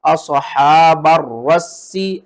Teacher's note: را کو بھی 2 بار پڑھیں گے سختی کے ساتھ اور سین کو بھی 2 بار سختی کے ساتھ پڑھیں گے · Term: تشدید